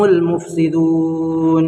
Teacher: یہاں پر صرف لام پڑھائے گا، الف کو نہ پڑھیں گے